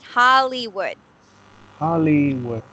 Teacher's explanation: So we don't actually pronounce it as a Y sound, but it's like an E sound, right?